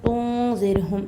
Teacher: नून साकिन के बाद इख्फा का ज़ाल है तो इख्फा के साथ पढ़ना है